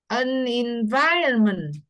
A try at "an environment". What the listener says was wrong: Thấy không? Chữ an cái N nối qua nè. An environment. Environment. An environment.